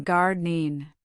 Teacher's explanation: The ing ending softened to in.